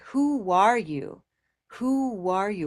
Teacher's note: the connection between the two words is a W consonant